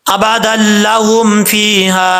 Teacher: لام اور را میں غنہ نہیں کیا جاتا۔ اب یہاں پر ادغام تو ہو رہا ہے، نون تنوین کے بعد لام آ رہا ہے، جب اس کو ملا کے پڑھیں گے ادغام ہوگا، دال لام دو زبر دل، لیکن یہاں پہ غنہ نہیں ہو رہا۔